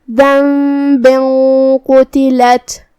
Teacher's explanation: حروف الاخفاء میں سے ہے، اخفاء کا معنی ہے چھپا دینا، تو ہم یہاں تنوین کو چھپاتے ہوئے لیکن غنہ کے ساتھ یہ حکم کو ادا کریں گے · قاف کی ادائیگی زبان کی جڑ اور تالو کے نرم حصے سے ہے ، قاف حروف تفخیم میں سے بھی ہے تو ہمیں اسے